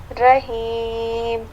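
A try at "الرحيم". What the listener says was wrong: رحیم نہیں، را کو موٹے کیجیے. رحیم.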